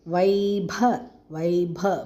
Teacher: ப நாலாவது ப மகாபிராணம்.